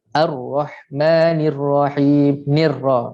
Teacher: Kemudian selepas lam ra yang diberikan tanda sabdu, maka yang bunyi ialah ra. Lam tak ada bunyi, lam dah hilang dah. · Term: idgham syamsi